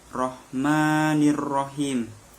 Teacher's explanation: pada bacaan him di situ terdapat hukum bacaan mat arid li sukun yang dapat dibaca panjangnya 2-6 harokat